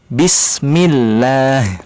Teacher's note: hurufba itu makhrojnya terletak di dua bibir